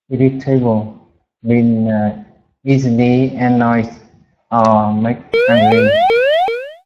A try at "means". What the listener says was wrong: Okay, so just note there, irritable means, just to pronounce that S in means.